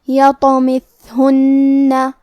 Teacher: حرف الثا کی ادائیگی زبان کے سر اور اوپر والے دانتوں کے اندرونی کناروں سے ہے. کیونکہ تھا ساکن ہے تو ہمیں تھا کو ہمزے سے پڑھنا ہے اور ہمزے کا معنی ہے حرف کی آواز ایسے کمزور ہو کہ اس میں پستی پائی جائے.